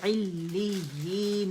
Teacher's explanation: आइन बहुत वाज़े होना चाहिए, ठीक है, हमजा नहीं बनाना इसे